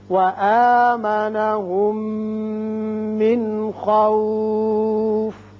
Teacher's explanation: وآمنهم میم ساکن ہے، اس کے بعد میم متحرک، یہاں ادغام ہوگا غننے کے ساتھ. من نون ساکن کے بعد خا آ رہا ہے جو حروف حلقی میں سے ہے، لہذا یہاں اظہار حلقی ہوگا.